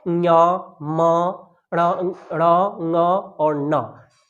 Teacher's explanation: नाक से भी आवाज निकल रही है